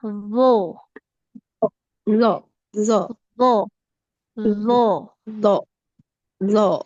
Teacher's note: huruf d ujung lidahnya menempel ke ujung gigi dari atas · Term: Huruf dho